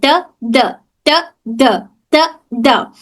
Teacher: जुबान हल्की सी टच होती है। वाइब्रेशन नहीं होता है। इसमें भी हमारी जुबान ऊपर के दांतों को हल्के से टच होती है। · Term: लाइट लेटर